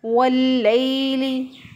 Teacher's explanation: वाव को होंठों को गोल करके वाव अदा करेंगे। लाम के ऊपर शद है, शद वाला हरफ पीछे वाले ज़बर ज़ेर पेश वाले हरफ के साथ मिलता है और मिल के अदा होता है, इसलिए लाम के ऊपर जो शद है इसको पीछे वाले वाव के साथ मिलाया तो अलिफ पढ़ने में नहीं आएगा।